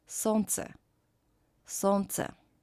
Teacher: combination of letters L, N, pronounced as N, солнце, солнце.